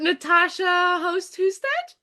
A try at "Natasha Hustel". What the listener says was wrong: so there's a little bit between the D. It doesn't get pronounced as a D, so it's Natasha Hustel. that's how she would say it anyway.